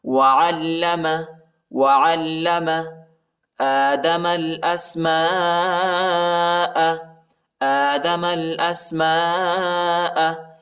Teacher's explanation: الف پر بڑا مد آیا ہے، اس کو تقریباً 3-4 سیکنڈ تک کھینچنا ہے